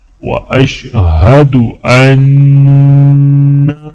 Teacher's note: لا شریک لہ واشہد ان، نون پر غنہ کیا جائے گا